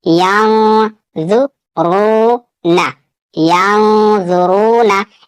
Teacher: यहाँ पे नून साकिन के बाद वा है और वा हरूफ इख्फा में से, यहाँ पे भी इख्फा होगा और वाव साकिन से पहले पेश है वाव मद्दा, यहाँ थोड़ा खींचकर पढ़ना है